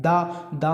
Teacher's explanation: दा में हमारी जीभ क्या होती है, दांत से टकरा रही है।